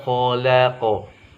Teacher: huruf kho dia hurufnya tebal tapi seraknya sedikit saja, tidak boleh banyak-banyak apalagi sampai terdengar suara kayak dahak kho.